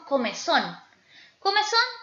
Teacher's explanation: su fuerza vocálica cae con mayor intensidad en son